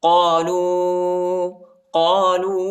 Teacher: قالو، وہ پر جو ہے چھوٹا مد آیا ہے، اس کو تقریباً 2-3 سیکنڈ تک کھینچنا ہے